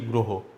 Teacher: যেহেতু র ফালা যুক্ত আছে, এই র ফালার সাথে অ আছে, তাই অ এর উচ্চারণটা কি হয়ে যাচ্ছে, ও এর মতো হয়ে যাচ্ছে। ও এর মতো হয়ে সেই উচ্চারণটা দাঁড়াচ্ছে কি গয়ে এইরকম হয়ে যাচ্ছে, গ্রহ উচ্চারণ করছি।